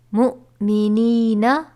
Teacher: جہاں پر جزم کے ساتھ حمزہ ساکنہ آئے تو اس کو ہم جھٹکا دے کر پڑھیں گے